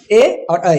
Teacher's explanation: कंठ और तालु से उच्चारित होने वाले वर्ण हो गए ए और ऐ।